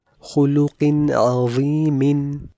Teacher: The noon sakin of this tanween is in izhar and hence it will be a regular ghunnah without any extension.